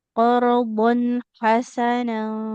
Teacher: huruf ha di tengah tenggorokan